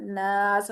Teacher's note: इसको इसलिए ज्यादा खींच रही हूं कि हरफ मदद के बाद सीन आ रहा है और सीन को हम कर रहे हैं साकिन। वफ कर रहे हैं ना तो वफ की सूरत में हमने सीन पे जजन लगा दी। · अलिफ मद को तो दो हरकत खींचते हैं लेकिन मैं इसको ज्यादा खींच रही हूं। इसको इसलिए ज्यादा खींच रही हूं कि हरफ मदद के बाद सीन आ रहा है और सीन को हम कर रहे हैं साकिन। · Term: मद्दे आरिज वफी